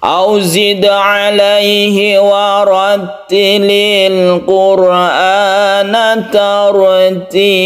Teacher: ada sukun ra yang sebelumnya ada dhamma, maka sukun ra ini dibaca tebal